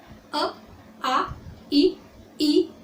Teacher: आपको पता है कि स्वरों का उच्चारण करते समय उनका उच्चारण स्वतंत्र रूप से किया जाता है। ओके, इन्हें जब हम बोलते हैं तो हमारे मुख से हवा जो है बिना रुकावट के निकलती है।